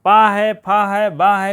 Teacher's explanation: ओष्ठ से मीन ओठ से बोले जाते हैं